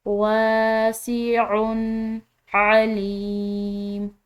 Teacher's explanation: ठीक है, वासिउन अलीम, आइन हलक से अदा करेंगे और यहाँ पर जो है ये या मद्दा, तो इसकी वजह से हम लाम को एक अलिफ के बराबर खिंचाव देकर पढ़ेंगे